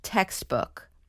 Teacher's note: so we put the stress on text